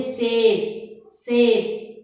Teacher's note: अब दंत्य श, इसको क्यों बोलते हैं, क्योंकि दांतों के जो आपका मूल है यानी कि जो जड़ है वहाँ पीछे हमारी दांतों के पीछे की तरफ हमारी जीभ टकराती है, इसलिए हम इसको क्या बोलते हैं, दंत्य स